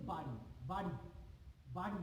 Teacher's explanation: দেখো আমি যখন উচ্চারণ করছি বাড়ি বাড়ি বাড়ি, বয়াকাটা বাড়ি, তখন কিন্তু আমাদের জিভ কম্পিত হয় না।